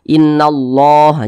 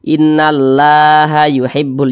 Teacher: Nah, ini kalimat Allah di belakangnya, di sini di belakangnya nih memiliki tanda baca fathah nih hurufnya. Maka kalimat Allah dibaca tebal, dibaca tafkhim.